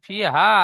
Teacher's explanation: ফি হা আলিফ মাদ্দা, একালিফ টান হবে।